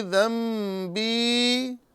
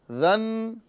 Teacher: ذن یہاں پر نون ساکن ہے لیکن نون کو بدل کر ہم ذم کریں گے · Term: اقلاب